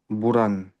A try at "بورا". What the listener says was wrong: بورا. بورا. À la fin, tu ne prononces pas quand tu t'arrêtes.